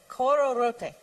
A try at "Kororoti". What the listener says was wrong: Do you notice how you are inflecting the end differently from what we are saying? Not that you should change. Just notice it. We are saying kororoti. You are saying kororote.